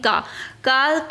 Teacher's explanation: का से कंठ, यानी ये जो बोला जाएगा वो कंठ से बोला जाएगा